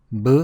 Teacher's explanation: It has to be produced with much less force than P, with very little aspiration. The aspiration is so weak that it may even sound like English B. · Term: plain consonant